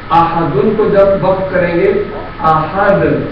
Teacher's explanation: اب ہم جب یہاں آیت وقف کریں گے تو تنوین سائلنٹ ہو جائے گی، لہذا دال سائلنٹ پڑھے جانے کی وجہ سے قلقلہ ہوگا